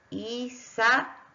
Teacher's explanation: queda una vocal en una sílaba y otra vocal en una sílaba. Ambas vocales son abiertas. Por lo tanto, estoy en presencia de un hiato.